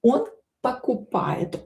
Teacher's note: Он not stressed. Pronounce it as a.